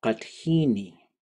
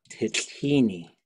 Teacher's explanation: it's very common for everything except for the last word to get smushed up and to go short and low